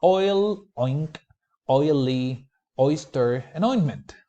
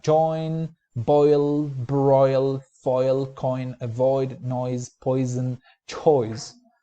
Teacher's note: it begins in the back, and then it glides from a mid to a more or less high position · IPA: ɔɪ